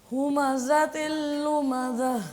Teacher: زا میں تھوڑی سختی کریں، سیٹی کی آواز ہے. همزة لمزة.